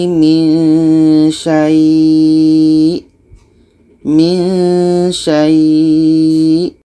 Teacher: syai ini kita panjangkan minimum 2 harkat. Setelah itu kita matikan hamzahnya. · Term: mat lain